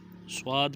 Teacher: صاد پہ ہونٹ گول ہوں گے